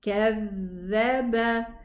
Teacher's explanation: We have a shadda dhal. كَذَّبَ. Give it its running time. It has rakhawa.